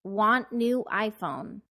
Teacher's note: i stress the verb adjective and noun and said each of them nice and clearly on the beat